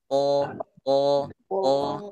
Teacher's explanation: Huruf to dia punya sifat itbaq yang selalu tebal.